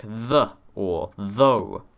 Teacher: the sound th, the voiced dental fricative, which you find in English words like the or though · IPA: ð